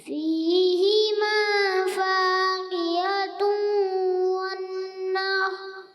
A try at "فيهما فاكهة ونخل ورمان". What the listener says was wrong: والنخل نہیں کریں گے. نون پر کیا؟ نون پر زبر ہے تو ہم نے تشدید نہیں لگانی. فیہما فاکہۃ ونخل ورمان.